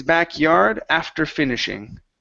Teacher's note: we're going to stress the ending of this word